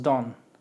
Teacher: si pronunciáramos la palabra don't, debe sonar la t, pero cuando va más corrido, simplemente decimos don